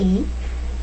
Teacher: el fonema I es una vocal anterior y cerrada